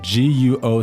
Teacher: second tone a rising tone the second tone